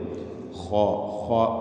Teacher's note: തൊണ്ടയുടെ മേലെ അറ്റം. അവിടെ നിന്ന് തടിപ്പിച്ചുകൊണ്ട് ഉച്ചരിക്കേണ്ട അക്ഷരമാണ് ഖാ. ഖാഇൻ്റെ ഉച്ചാരണത്തിൽ ഷഹീർ വരരുത് എന്ന് ചില പണ്ഡിതന്മാർ സൂചിപ്പിക്കുന്നു.